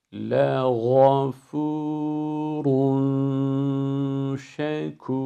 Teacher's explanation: Yarı yolda F harfini kalına evirmek yok. Sonuna kadar ince başladık. Uzatma boyu o incelik korunacak. Ra'ya vardığımızda ra'yı kalın okuyacağız.